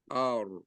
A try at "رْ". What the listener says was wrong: Nah, getarnya harus ada. R. Jangan seolah-olah getarnya nggak kedengaran.